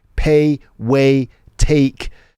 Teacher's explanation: Sounds like the tongue is drawn a bit further back in the mouth. It also sounds flatter, more of a monophthong. · diphthongs are often backed, meaning they are pronounced further back in the mouth with the tongue pulled back more than in received pronunciation. So again, the A sound, to me, it sounds like this diphthong is backed in MLE, A, becoming that A sound.